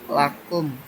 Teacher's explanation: mim sukun bertemu huruf waw, jadi dibaca jelas tanpa dengung alias ishar syafawi.